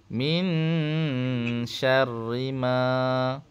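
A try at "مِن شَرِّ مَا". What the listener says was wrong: ma panjang ma panjang sikit kat ma tu panjang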